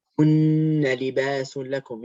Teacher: Look, the noon's got shadda on it. So it comes from your nose. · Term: ghunna